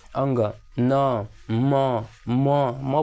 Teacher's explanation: ठीक है, नासिका से मतलब नाक से, जैसे अंग, न, म बोल के देखें ना, नाक पर ज़्यादा वजन पड़ेगा, मतलब भार लगा के उच्चारण स्थान नाकी से हो रहा है, तो इसीलिए इसे कहते हैं ना नासिका से।